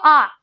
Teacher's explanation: विवृत होता है विवृत मतलब मुख खुला हुआ तो जब आप कहते हो आ कहो विव्रतर मुह खोल के